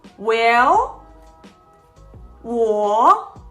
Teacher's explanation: The third tone is the deepening tone. It goes down first and then goes up.